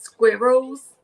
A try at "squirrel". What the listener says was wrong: did you just say school whirl? I love how you say that. There's like a W in there. Can you say it with my accent? Squirrel. I guess there's a W in there too, huh?